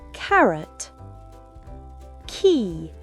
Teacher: Le son K se fait au fond de la gorge, bien sec et expulsé. En anglais, ce son est fortement aspiré au début d'un mot ou d'une syllabe accentuée.